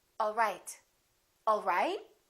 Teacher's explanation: one is falling intonation and one is rising intonation